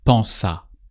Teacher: the pense and the a tend to merge together. So you're more likely to hear pensa.